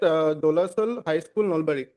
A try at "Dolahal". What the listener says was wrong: Dola Sal, it's Dola Hal. Pronounce properly. Dola Hal is Dola Hal, not Dola Sal.